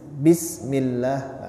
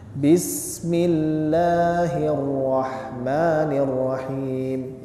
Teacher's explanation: Sin ini adalah huruf hams hams itu artinya mengalir